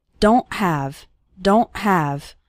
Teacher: don't really pronounce the T strongly so don't say don't okay it's more of a stop at the back of your throat the sound cuts off very suddenly